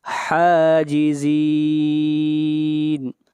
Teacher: ہا کو کھینچ کر پڑھیں گے ایک الف کے برابر، یہاں پر کھڑی زبر ہے اور حاجزین پر مد عارض وقفی ہوگی۔